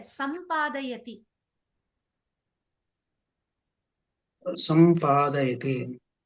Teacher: అంటే సా పైన అనుస్వారం ఉంది. అనుస్వారము ఆ వర్గంలోని అనునాసికగా మారుతోంది. మాగ మారిపోతోంది. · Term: పరసవర్ణ సంధి